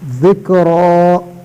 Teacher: ذال اس طرح ادا ہوتا ہے، زبان کی سر دو سامنے والے اوپر دانتوں کی سر سے لگا کر ادا ہوتا ہے